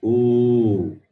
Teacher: Then the long vowel is oo. Stretch it for 2 units of time.